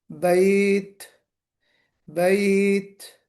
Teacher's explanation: اور ہمس کی وجہ سے کنٹینویشن آف ساؤنڈ، معاف کیجیے گا، بریتھ، سانس کا جاری رہنا، بیت، بیت، یہ جو ہلکا سا جو ساؤنڈ ہے، یہ ہم آپ کو بتا چکے ہیں، بار بار بتا چکے ہیں، تو اس کو ہمیں دھیان رکھنا ہے، تا پر شدت بھی لانی ہے، اور ہمس کی وجہ سے جریان النفس بھی ہوگا